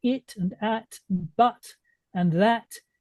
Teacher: But I mean, you see, if we're talking about words, simple words like it and at and but and that, and the T is simply not pronounced. It's not a glottal stop.